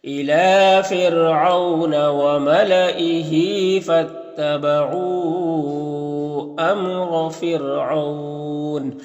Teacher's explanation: یہاں پر وقف کریں گے تو نون کا زبر سکون سے بدل جائے گا، تو پھر یہاں پر مد لین عارض ہوگا، اس کو جس میں طول توسط قصر تینوں جائز ہوتا ہے لیکن قصر بہتر ہوتا ہے، تو اس طرح سے پڑھیں گے۔